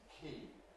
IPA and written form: kʰiːn (keen)